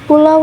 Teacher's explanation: bunyi vokal bergeser dari satu posisi ke posisi lain dalam satu tarikan nafas menghasilkan kesatuan bunyi yang khas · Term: diftong